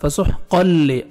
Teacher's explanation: گے فسح قل قوف کو موٹا کر کے پڑھنا ہے اور قوف کو تنوین ہے تنوین کے بعد جو 6 لیٹرز ہیں حروف یرملون ٹھیک ہے ان میں سے لام ہے آپ نے ادغام کرنا ہے بغیر غنہ کے ساتھ